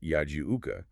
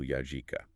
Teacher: He frequently drops the glottal stop known as the hamza in Arabic. So the formal classical word yajiuka, which means he comes to you, is written as the much more colloquial street-level yajika.